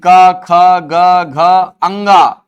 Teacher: क, ख, ग, घ, अंग सब के सब कहां से उच्चारित होते हैं? कंठ से।